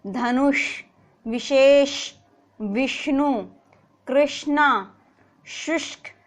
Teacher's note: तो जो हमारी जीवा है वो हमारे मूर्धा भाग से टकरानी चाहिए। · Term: मूर्धन्य